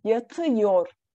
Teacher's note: A ünlü daralması olarak ı'ya dönüşüyor.